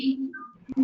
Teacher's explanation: Everyone say a nice long E. That's the smiling vowel.